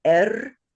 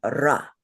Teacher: the semivowel, which functions often as a consonant, is rolled and it's stronger. It sounds a little bit like a Spanish R, but not quite that much.